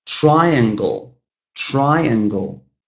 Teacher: 3 syllables, but the first syllable is stressed.